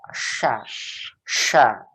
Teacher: naikkan tengah lidah, naikkan ke langit-langit atas, lihat nih, naikkan. Tapi jangan menempel ya, kalau menempel nanti rija. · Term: huruf shin